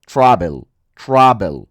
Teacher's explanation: Pues sería con una L otra vez, porque la sílaba fuerte está en la A, en travel, no es travel.